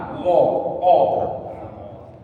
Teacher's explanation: Manggo ini istilah bunyi o, artinya mulut kita monong ke depan.